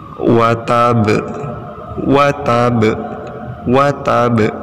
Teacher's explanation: Kemudian ada hukum bacaan qalqalah yang diberi tanda warna hijau. Ba-nya dipantulkan ya karena dibaca sukun atau mati.